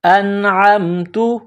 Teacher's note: ہے، نون ساکن کے بعد عین ہے، حروف حلقی ہے، تو یہاں نون ساکن میں آواز ناک میں نہیں چھپائیں گے، غنہ نہیں کریں گے ، حمزہ نون زبر ان، عین میم زبر عم، انعم، تا